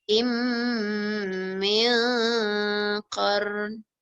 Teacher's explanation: Jadi maksudnya qablihim ha ni seolah terus masuk kat mim. Bacaannya terus masuk kat mim. Jadi mim yang pertama tu tak bunyi. Macam kita buat idgham ma'al gunnah lah.